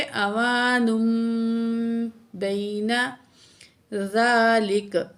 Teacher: यहाँ जी तनवीन के बाद दो पेश, यहाँ दो पेश तनवीन है, तो तनवीन के बाद बा आ रही है तो नून की आवाज़ को हमने मीम से बदल के पढ़ना है